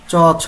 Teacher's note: আমরা তালু থেকে উচ্চারিত হচ্ছে তার মানে এটা হচ্ছে তালব্য বর্ণ